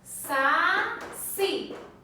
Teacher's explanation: Qual que é mais forte? O si. Então ela é uma oxítona